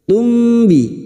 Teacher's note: Mim sukun bertemu ba, ikfa syafawi, samar di bibir. Tumbi mendengung selama 3 harokat.